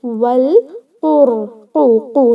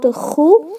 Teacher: this is a letter kha recited from the first part of a throat. This is a throat letter. · this qaf is not a throat letter, it is a tongue letter. Okay, this is pronounced from your tongue, but this kha is pronounced from your throat.